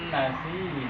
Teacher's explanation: innasina ditahan dia karena nun bertemu dengan nun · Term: idgam bighunah